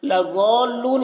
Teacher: یہاں پر حرف مد کے بعد لام ہے جس پر تشدید ہے تو یہاں پر مد لازم ہو رہا ہے اور مد لازم کو بھی 3-4 الف کے برابر کھینچ کر پڑھتے ہیں